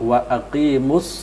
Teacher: karena huruf lam bertemu dengan sad itu langsung dimasukkan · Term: lam syamsiah